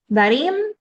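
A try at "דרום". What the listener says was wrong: No, the point is on top. Darom. Darom.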